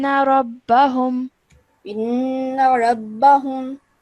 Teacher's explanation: a two-second nasal sound to be held